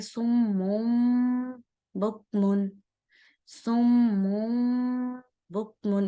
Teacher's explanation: یعنی من کی آواز کو مم پڑھیں گے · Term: اقلاب